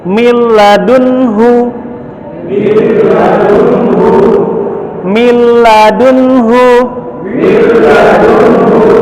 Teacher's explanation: Baik, milladunhu, min dan ladunhu, min dan ladunhu, tetapi karena dia masuk hukum idgham, masuk ke lam, nunnya hilang, masuk ke huruf lam, jadi mil, tapi tidak digunnah, tasydid biasa ya · nun atau tanwinnya hilang, berubah ke huruf berikutnya, cuman di lam dan ro tidak gunnah, bacanya sempurna, tasydid biasa aja.